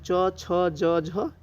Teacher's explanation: इन सभी का उच्चारण जो होता है तालु से होता है। इसीलिए इसे तालव्य वर्ण कहते हैं।